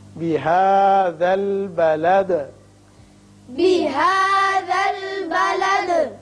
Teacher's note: یہاں وصل کی صورت میں آپ دال کے نیچے زیر پڑیں گی بلدی وانت، لیکن جب آپ وقت کرنا چاہیں چونکہ آیت ہے تو دال ساکن ہو جائے گی اور ساکن ہونے کے ساتھ ساتھ اس کی صفت قلقلہ بھی ادا ہوگی.